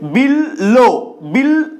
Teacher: ল এর সাথে ব ফলা যুক্ত হয়েছে বলে এই ল টা দ্বিত্ত হচ্ছে মানে দ্বিগুণ হয়ে যাচ্ছে আমরা উচ্চারণ করছি বিল বিল তো এই বটা ল এ পরিণত